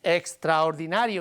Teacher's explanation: nario is longer but only slightly longer